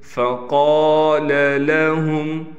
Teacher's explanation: قاف کو موٹا کر کے بھی پڑھیں گے، قاف کے بعد الف کے ہونے کی وجہ سے اس قاف کو ایک الف کے مقدار کھینچ کر پڑھیں گے۔